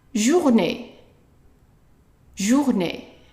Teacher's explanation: the E with an accent on top of it is pronounced as a short A. Not A, just A.